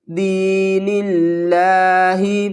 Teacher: یا مدہ ہے، 1 الف کی مقدار کھینچ کر پڑھیں گے، نون کو لام سے ملائیں گے ، لفظ اللہ کو بریک پڑھیں گے کیونکہ لفظ اللہ سے